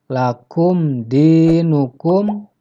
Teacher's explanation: Seharusnya dalam kata lakum di huruf mim nya dibaca jelas karena disini adalah hukumnya Idhar syafawi izhar artinya jelas jadi huruf mim Disini yang tidak boleh dibaca